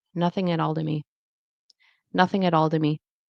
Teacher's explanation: Then because the T is between two vowel sounds, so at all, it's going to turn into at all, right? So turns into a fast D. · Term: flap T